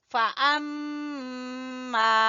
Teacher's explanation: پہلے میم مشدد کا غنہ ادا کریں گے پھر الف مدہ پڑھیں گے۔ میم مشدد کے غنہ کے لیے آپ نے دونوں ہونٹوں کو ملا دینا ہے، ٹھیک ہے، اور غنہ کرنا ہے۔